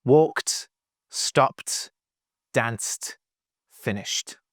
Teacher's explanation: The last sound of all of these words is unvoiced. CP and sh don't use the voice. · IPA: /t/